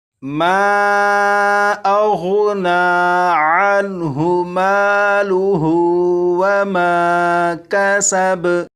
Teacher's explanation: یہاں پر ہا کے اوپر الٹا پیش ہے، یہاں پر بھی الف اور الف سے پہلے زبر ہے، لہٰذا یہ بھی الف مدہ ہوا۔ الف مدہ کو، الٹا پیش کو اور الف مدہ کو، ان تینوں کو ایک ایک الف کے برابر کھینچ کر پڑھیں گے